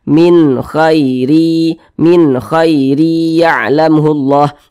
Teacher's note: Maka nun sukun berjumpa dengan huruf kha hukumnya adalah izhar halqi. Maka dibaca jelas dan tidak berdengung